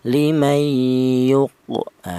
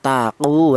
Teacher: ada suara pantulan namanya qalqalah. Kalau huruf qof ini berharakat atau harakat fathah atau kasrah atau domah itu namanya hidup itu tidak bisa dipantulkan ya.